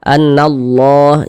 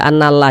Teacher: Lam jalalahnya ini kita baca tebal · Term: baca tafkhim